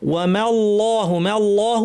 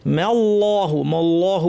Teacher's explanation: আল্লাহের লাম ভারী বটে কিন্তু মিমটা পাতলা থাকবে